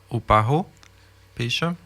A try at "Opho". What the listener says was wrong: Le A, il se prononce pas. Opho. Opho.